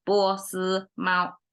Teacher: each one have to come exactly same pitch and have to be flat